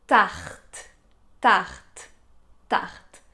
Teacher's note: pour prononcer ce R qui est plus léger, c'est partir du son : H, H et essayer de le durcir un peu.